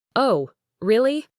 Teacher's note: Try to convey genuine surprise with a clear rising intonation at the end.